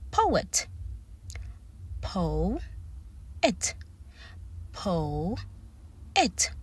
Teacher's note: Now, you can hear that I am putting emphasis on the sound O. Po-et. So that means I need to separate the word after the O.